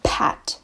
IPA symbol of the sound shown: ʰ